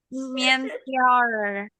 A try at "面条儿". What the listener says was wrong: Oke, langsung aja Tiaor gitu. Tiao, mientiao. Gak usah ada e-nya, mientiao.